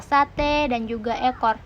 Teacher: vokal E kecil atau terbuka seperti pada kata sate dan juga ekor